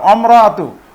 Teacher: এখানে যে মাঝখানে যে এই যে হামজাটি রয়েছে এটি উচ্চারণ হচ্ছে না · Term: হামজাতুল ওয়াসলি